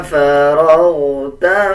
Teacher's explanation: فا کے بعد را ہے اور را کے اوپر زبر ہے، جب را کے اوپر زبر اور پیش آ جائے تب را کو پر یعنی موٹا کر کے پڑھا جاتا ہے